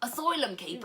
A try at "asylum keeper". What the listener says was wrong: It sounds like you're saying caper, not keepers. It doesn't sound like that.